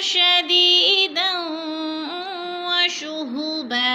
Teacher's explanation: दो ज़बर तनवीन के बाद वो मुशद्दद है तो इधर इदगाम करेंगे